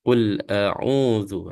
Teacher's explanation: dalam tekan tekan dia tu dia akan jadi lebih tebal ya jadi ni adalah Z yang kecil kita baca lebih nipis ya